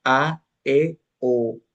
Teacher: requieren una mayor abertura vocal al producirlas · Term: vocales fuertes